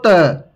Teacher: आप त बोलते हैं तो जो जीभ है वो दांतों का स्पर्श करती है। जैसे बोलो त, तो त बोल के देखोगे तो आपकी जो जीभ है वो दांतों के स्पर्श करेगी।